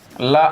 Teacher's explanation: जीभ हल्का सा मुड़ती है, अग्रभाग उसका थोड़ा सा मुड़ता है, तो जो हवा निकलने वाली होती है मुख से, वो जीभ के बगल से पार्श्व भाग से निकल जाती है, इसलिए इसे हम पार्श्विक व्यंजन भी कहते हैं।